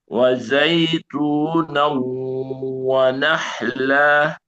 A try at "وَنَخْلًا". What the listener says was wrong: Kok tebalkan. Wanah. Ada bunyi nya.